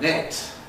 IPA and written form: net (net)